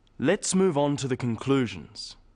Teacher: Stressing conclusions because it's the key word in this sentence.